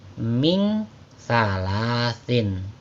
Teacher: bacaannya bukan ming, melainkan disamarkan atau didengungkan ya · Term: ikhfa